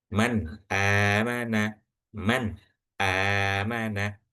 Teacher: Jadi benar-benar jelas tanpa ada yang didengungkan atau disamarkan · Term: izhar